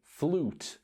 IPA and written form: fluːt (flute)